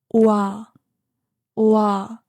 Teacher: 와 is made by combining O and 아. Round your lips to make O and then open them for 아.